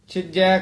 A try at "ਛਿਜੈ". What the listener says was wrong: ਇਹ ਛਿਜੈ ਬਿਹਾਰੀ ਨਹੀਂ ਲਾਉਣੀ ਛਿਜੈ ਕਸ ਕੇ ਬੋਲਣਾ ਹੈ